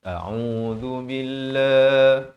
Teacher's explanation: lafzul jallah dibaca nipis 2 harakat